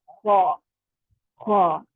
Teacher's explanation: اب خا اور غین, خا اور غین جو ہے یہ حلق کے شروع والے حصے سے ادا ہوں گے اور خا جو ہے گلے کی خراش کے ساتھ ادا ہوگا. آپ کے گلے میں ایسے رگڑ کھاتے ہوئے آواز نکلے گی خا خا, اور یہ پر بھی ہوگا.